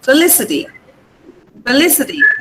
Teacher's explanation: The stress is on Lee.